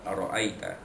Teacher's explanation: ra itu dibaca dari atas dengan tebal, namanya tafkhim